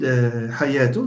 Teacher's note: The sound h is a pharyngeal, not pharyngalized.